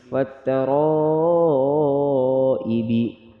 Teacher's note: وقف والسماء واتا زبر وتا زبر تا وتا را الف زبر را وترا حمزہ زیر ای با زیر بی وترا ای بی را موٹا پڑھیں گے، پانچ الف والا مد ہے، وقف میں قلقلہ کریں گے